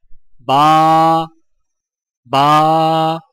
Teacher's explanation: الف، آ کو بغیر کھینچے لام کو فا کے ساتھ فوراً ملائیں، یعنی الف، الف۔ با، ہونٹوں کے گیلے حصے کو سختی سے ملا کر باریک آواز میں پڑھیں